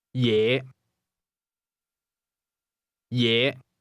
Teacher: Is pronounced with a low rising tone.